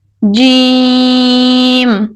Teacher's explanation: جیم، اس کو تقریباً 5 الف کے برابر کھینچ کر پڑھنا چاہیے